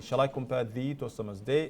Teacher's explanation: Shakespeare's Sonnet 18 opens with an unstressed thee